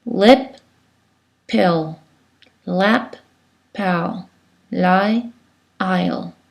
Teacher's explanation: Le son en coda, c'est-à-dire en fin de syllabe, est beaucoup moins clair que celui en attaque. Il peut même ressembler un peu à une voyelle.